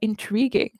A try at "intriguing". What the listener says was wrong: you see that letter U there? We don't say it. I don't know why it's there.